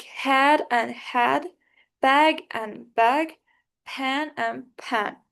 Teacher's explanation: compared to e, it is a more open vowel, but compared to a, it is a more closed vowel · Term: trap vowel